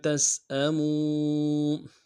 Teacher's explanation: ولا، تا کو سین کے ساتھ ملانا ہے، سین کی سیدھی باریک ہوگی، حمزہ کو نمشہ ادا کریں گے، میم کو واو کے ساتھ ملانا ہے، واو مدہ بھی ہے، مدہ کے اوپر مدہ عارض ہے، 2 الف مقدار میں کم سے کم کھینچیں گے